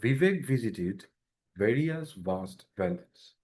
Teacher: উপরের দাঁতের সাথে নিচের ঠোঁটের একটা হালকা মানে লাগানো থাকবে, কিন্তু বাতাসটা বেরিয়ে যাবে